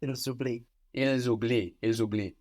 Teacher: the silent S on the end of il will become the first sound at the beginning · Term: liaise